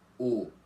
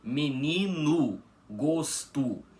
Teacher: nessas duas palavras o O final fica com som de U · Com esse O final das palavras com som de U, tá bom? E, como não tinha mencionado antes, em alfabeto fonético, esse som de U é representado com um U minúsculo normal, algo que parece que vocês estão acostumados, tá bom?